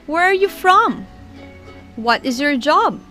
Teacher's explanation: for the wh questions we will use falling intonation and the voice goes down